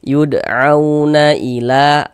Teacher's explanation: Nah, jadi kalau ada huruf waw sukun yang sebelumnya harokat fathah, maka huruf waw sukunnya huruf lin. Kita baca lunak, lembut.